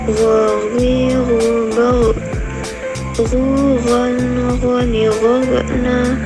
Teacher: keluar dari tenggorokan yang terdekat dari rongga mulut, diucapkan lembut suaranya tanpa mengalir udaranya. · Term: huruf go